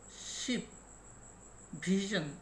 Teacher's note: It is the area between the alveolar ridge and the hard palate. To produce these consonant sounds, the blade of the tongue articulates against the teeth with raising the main body of the tongue towards the palate. অর্থাৎ অ্যালভিওপ্যালেটাল অথবা post alveolar সাউন্ডগুলো উচ্চারণ করার সময় জিহ্বার অগ্রভাগ দাঁতের নিকটে চলে আসে এবং জিহ্বার প্রধান অংশ বা এর যে মূল অংশটা আছে সেটা তালুর থেকে ফুলে একটু উপরে উঠে। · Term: post-alveolar